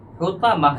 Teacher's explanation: ताए मुदव्वरा है तो इसे हाय साकिना से बदलना है, इसलिए मीम है ज़बर मह, हुतमह।